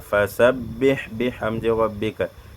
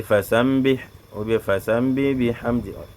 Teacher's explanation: tu colles seulement la bouche lors de la prononciation du ba'un sans nasillement. Il y a des gens, au lieu de dire simplement fasabbih bihamdi rabbika, et dit fasambih ou bien fasambi bihamdi, le son du nguna ne vient pas, le nasillement ne vient pas.